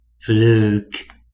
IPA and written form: fluk (fluke)